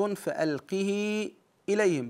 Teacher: يمد مدا مشبعا لوقوع الهمزه بعد ياء الصله